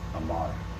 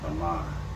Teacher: in modern Hebrew, depending on where you're from, they will almost swallow the R, like French